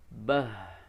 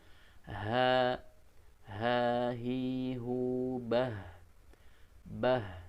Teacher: Nah itu terasa bahwa makhrajnya dari tenggorokan paling bawah dan bukan dari rongga dada ya. Hanya hati-hati jangan dibaca menjadi berat sehingga yang keluar dari rongga dada ya.